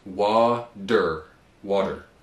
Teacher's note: So we'd say water, and contrary to British English, where they usually cut off the R at the end of a word, in American English we pronounce it. So it's water, water.